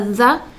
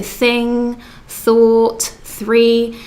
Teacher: We've got a the, which is slightly harder. This is a voiced sound. And then we've got the unvoiced th sound.